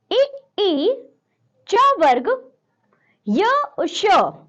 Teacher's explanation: इनका उच्चारण स्थान है तालु, इसे हम कहते हैं तालव्य।